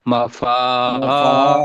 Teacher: الف کو دو حرکت کے برابر لمبا کرنا ہے